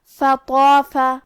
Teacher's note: مد الف اپنے پیچھے والے حرف کا حکم لیتا ہے تفخیم میں اور ترقیق میں، لہذا ہمیں مد الف کو بھی بھاری آواز میں پڑھنا ہے